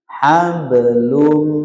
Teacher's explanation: kalau dia posisi huruf qalqalah di tengah, tidak boleh diputus pantulannya, tapi disambungkan ke lum.